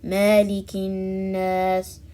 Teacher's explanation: stretching the fatha sound on the mim